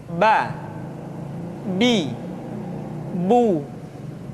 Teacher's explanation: Huruf Ba dikeluarkan dengan cara merapatkan kedua bibir kita.